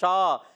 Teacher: اور شین الف زبر شا، شین کا مخرج ہے زبان کا درمیان، اوپر تالو کے درمیان سے